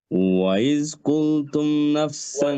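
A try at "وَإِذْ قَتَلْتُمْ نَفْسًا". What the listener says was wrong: ওয়াইদ হামজাটা clear করে ওয়াইদ হামজা ওয়াইদ কুলতুম আযাল হ্যাঁ ওয়াইদ মানে ইজ জাই দিয়ে না খেয়াল করে ওয়াইদ কুলতুম নাফসান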